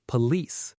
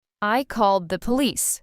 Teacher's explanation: >> A lot of learners put the stress on the first part, police, but native speakers stress the second part, police